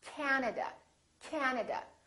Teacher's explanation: at another word that has three syllables and also Three A's this time the first syllable is stressed this time this a is really long